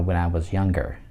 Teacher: Если вы услышали небольшую шепелявость у меня после was younger, этот прием, вернее, этот феномен называется palatalization, то есть когда у нас звук «е», любые слова, которые начинаются с буквы «y», это «you» или «your», когда мы их произносим, у нас есть шипящий, звонкий, либо глухой звук.